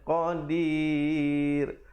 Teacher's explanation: qadir, dan ra-nya menjadi nipis